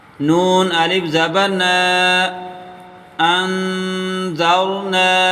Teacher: نون کو ایک الف کی مقدار کھینچ کر پڑھیں گے۔ نون الف زبر نا، انذرنا۔